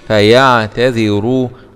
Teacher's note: راء ضمة مع التفخيم